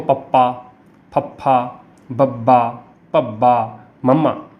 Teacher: ਜਦੋਂ ਆਪਾਂ ਇਹ ਪਵਰਗ ਬੋਲਦੇ ਹਾਂ ਤਾਂ ਸਾਡੇ ਬੁੱਲ ਜਿਹੜੇ ਆਪਸ ਵਿੱਚ ਛੂਹੰਦੇ ਆ, ਟੱਚ ਕਰਦੇ ਆ, ਮਿਲਦੇ ਆ, ਇਸ ਕਰਕੇ ਇਹਨਾਂ ਨੂੰ ਹੋਂਠੀ ਧੁਨੀਆਂ ਕਿਹਾ ਜਾਂਦਾ।